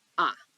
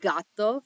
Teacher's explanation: the letter A in Spanish will always make the noise ah